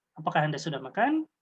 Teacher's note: Nah, intonasinya beda juga dengan tanda tanya. Berintonasi naik, datar, dan bertanda baca tanya. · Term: kalimat interrogatif